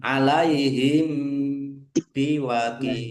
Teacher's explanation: Mim sukun bertemu dengan huruf ba. Bacaan ikhfa syafawi dibaca samar-samar.